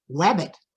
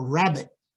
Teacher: It's because they notice the lip rounding on rabbit, and because R is so difficult, they substitute the W, the lip rounding, for the R.